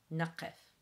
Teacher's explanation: that's the strange Q, which is again caught in the back of the throat